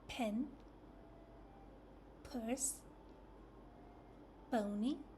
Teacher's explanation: the lips are together at the start of the sound like this p and then they pop open quickly.